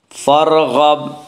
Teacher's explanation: غین کو پر پڑھیں گے، غین حروف مستعلیہ میں سے ہے۔ · را ساکن سے پہلے فا کے اوپر زبر ہے اسے را ساکن کو پر پڑھا جائے گا